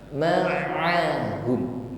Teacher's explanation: lunak saja pengucapan huruf ain yang keluar dari makhraj wasatul halqi, tenggorokan bagian tengah. Jangan tenggorokan ke bawah, jadinya menjadi huruf hamzah ma'ahum ya.